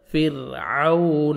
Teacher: عون واولین ہے، لپس کو راؤنڈ میں لے کے جانا ہے